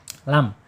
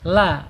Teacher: Jadi lam ini ada di ee ujung tepi lidah ya. Ujung tepi lidah menyentuh langit-langit yang depan ya. berdekatan dengan pangkal gigi seri atas lam. Kemudian secara sifat ada di tawas ya, yaitu antara tertahannya suara dan mengalirnya suara bainiah.